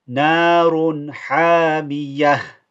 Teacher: We've changed the ta marbuta, the ta, into a ha and put a sukun on it.